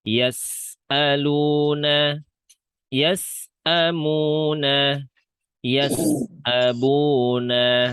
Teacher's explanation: Ingat huruf sin sifatnya rokhawah, jadi suaranya ngalir. Ngalir ke huruf selanjutnya, yas'a.